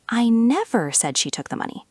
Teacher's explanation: Stress on said, maybe I implied it or wrote it.